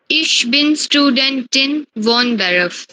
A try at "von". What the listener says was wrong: ना स्टूडेंटिन को स्टूडेंट, और ना ही फोन, वोन नहीं, नॉट वोन, फोन। pronunciation is important in German language। फोन, फिर बोलो